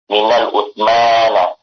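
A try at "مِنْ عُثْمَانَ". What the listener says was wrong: Min Utsman, nggak ada alif lamnya.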